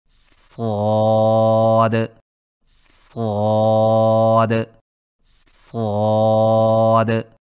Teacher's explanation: صاد کو ادا کرتے وقت شروع والی آواز کو باریک نہ کریں